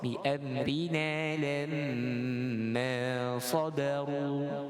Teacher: huruf ra dibaca dengan nipis, kasrah.